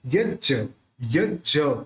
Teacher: ज को थोड़ा जोर से क्योंकि आधा भी मिला हुआ है